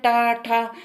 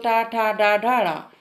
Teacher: जो हमारी जीभ की अगला भाग है, वो हमें तालु से मिल रहा है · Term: मूर्धन्य